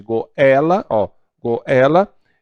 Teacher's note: a primeira vogal é a mais fraca, no caso de goela, goela, e a segunda é a vogal com um som mais forte. Então, isso é um ditongo crescente.